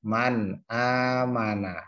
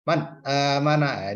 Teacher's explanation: bertemu dengan Hamzah hack coin coin hack namanya bacaan izhar halqi cara membacanya jelas-jelas to tidak ada dengungnya